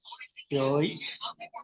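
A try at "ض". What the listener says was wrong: জয়ে নয়, বলেন জ।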